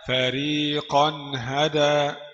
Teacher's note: قف تنوين بالفتح مظهر قبل الهاء المفتوحة